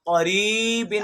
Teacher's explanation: آگے یا ساکنہ ہے، اور یا ساکن کے پیچھے والا حرف جو را ہے اس کے نیچے زیر ہے، تو یہاں یا مدہ ہو رہی ہے، تو مدہ پہ بھی تو مد کرنی ہے، قریبن، غنہ بھی کرنا ہے، غنہ بھی نہیں چھوڑنا، یا مدہ کے اوپر مد بھی کرنی ہے، اور قاف بھی موٹا کرنا ہے۔ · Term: قاف موٹا